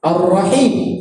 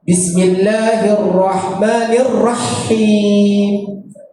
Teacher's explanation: Huruf ha ini tidak boleh dimatikan. Kalau kita baca bismillahirrahmanirrahim, kita akan matikan huruf H.